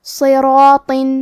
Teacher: کلمت صراط میں صاد حروف التفخیم میں سے ہے تو ہم یہ حرف کو بھاری آواز میں پڑھیں گے. حرف را پہ زبر ہے تو یہاں را کا حکم ہے تفخیم، ہمیں حرف را کو موٹی آواز میں پڑھنا ہے. اور کیونکہ اس کے بعد مد الف ہے، مد الف اپنے پیچھے والے حرف کا حکم لیتا ہے تفخیم میں اور ترقیق میں، لہذا ہمیں مد الف کو بھی بھاری آواز میں ادا کرنا ہے. · اور کیونکہ اس کے بعد مد الف ہے، مد الف اپنے پیچھے والے حرف کا حکم لیتا ہے تفخیم میں اور ترقیق میں، لہذا ہمیں مد الف کو بھی بھاری آواز میں ادا کرنا ہے. آخری میں حرف الطو ہے، طو حروف التفخیم میں سے ہے تو ہم یہ حرف کو موٹی آواز میں پڑھیں گے.